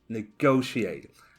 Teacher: So the stress is on the second syllable.